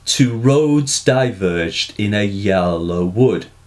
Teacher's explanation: loose iambic tetrameter as the poems meter with anapests unstressed unstressed stressed to vary the rhythm and mimic natural speech